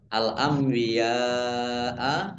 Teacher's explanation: Nun sukun bertemu dengan huruf ba, bacaan ikhlab. Dibaca membalik, nunnya dibaca mim.